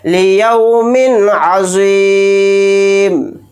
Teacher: بلا غنہ کے جلد پڑھیں گے، اظہار کر کے